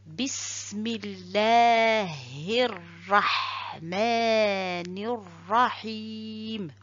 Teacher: Donc le verset se termine par kasra, mais cette kasra se transforme à soukoun à la fin.